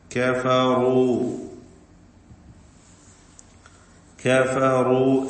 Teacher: كفروا كفروا എന്ന് പറയുമ്പോൾ റാഇന് മാത്രമാണ് തഫ്ഖീം വരുന്നത്. മറ്റക്ഷരങ്ങൾക്കൊന്നും തഫ്ഖീമില്ല, ശ്രദ്ധിക്കുക.